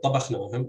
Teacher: stress falls on the initial syllable in this word